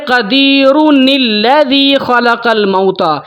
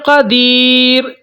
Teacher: تنوین کے اندر جو نون جزم والی ہے نا، وہ نون جزم والی کو انہوں نے بدل کے نون زیر کر دیا ہے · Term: نون قطنی